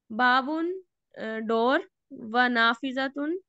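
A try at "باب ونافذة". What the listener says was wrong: It is better to not read the last vowel. Babun wa nafizah.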